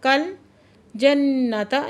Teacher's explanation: नून मुशद्दद है, गुन्ना वाजिबा करेंगे।